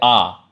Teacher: ठीक है, इसमें मुख कैसा होगा, पूरा खुलता है। जैसे अपन बोलेंगे आ, तो आ में क्या होगा, आपका पूरा मुख खुलेगा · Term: विवृत स्वर